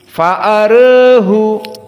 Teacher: Maka di sini taklil dibaca fa'arehu. Maka ra di sini dohirnya karena dia al-Imalah bukan lagi tafkhim